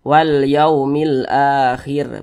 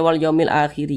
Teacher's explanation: kalau kita berhenti atau berwakaf tepat di huruf ro maka huruf ra kita sukunkan atau kita matikan